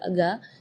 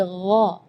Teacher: Di ayat ini yang pertama di makhraj huruf ghain ya, ghairil maghdubi ya, perlu diperhatikan bukan G, bukan huruf G ya, bukan ga, tapi gha. Jadi kalau ga itu dia makhrajnya dari lidah. Ya, tapi kalau huruf ghain itu dari bagian tenggorokan ya.